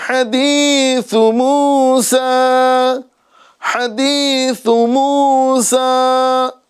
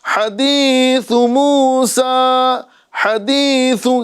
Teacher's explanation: موسیٰ کے سین کو ہمیں ایک الف کے برابر کھینچنا ہے، لیکن سا کو نہیں کھینچنا ہے. حدیث موسیٰ نہیں کہنا ہے، حدیث موسیٰ حدیث، یعنی جلدی پڑھ کر ہمیں وہاں سے گزرنا ہے.